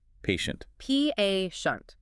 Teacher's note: It's a strong elongated A sound at the beginning, followed by a very soft, controlled sh sound.